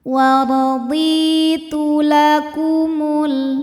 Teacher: War wardi d mad thobi'i zohiri. Sebab ada ya sukun yang sebelumnya kasrah. Maka huruf dod kita panjangkan dua harakat